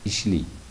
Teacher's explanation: A unlisi Y undoshi oldida I bilan almashinadi.